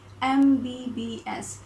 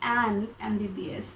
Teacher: all these degree names they start with letter m which is a consonant but when we pronounce them we get this a sound in the beginning